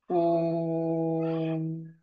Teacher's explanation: उ चा उच्चार करताना आपल्या ओठांचा आकार गोल व्हावा, ओ सारखा.